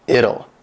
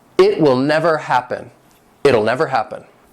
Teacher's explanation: especially in American English, the T is going to have that flap T sound, which is more like a D